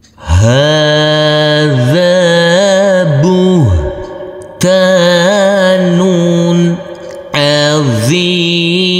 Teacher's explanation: Karena di atasnya ada huruf alif kecil yang berdiri tegak lurus. Huruf zal kita baca panjang dengan panjang 2 harokat juga. Karena di sini huruf zal yang berfathah a bertemu dengan huruf alif yang tidak berharokat.